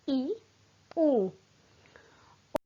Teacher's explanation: मुख द्वार बंद रहता है परंतु ऐसा बंद नहीं रहता कि उच्चारण ही ना हो सके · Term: संवृत स्वर